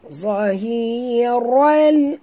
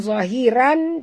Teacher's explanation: Zahiral, ral bukan zahiran, tapi ral, masukkan ke dalam lam